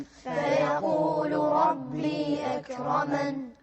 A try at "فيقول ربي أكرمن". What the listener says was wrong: أكرمن لا تقلقلون الكاف. فيقول ربي أكرمن.